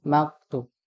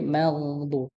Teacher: karena huruf gha termasuk huruf yang tebal ya. Jadi pangkal lidahnya dinaikkan ya.